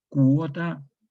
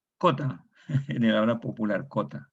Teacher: Bueno, esos fenómenos se llaman monoptongación. El diptongo se reduce a una vocal.